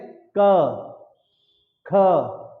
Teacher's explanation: जब हम इसको बोलते हैं जो प्राणवायु निकलती है, तो कहां पर जोर लगाती है? कंठ पर जोर लगाती है।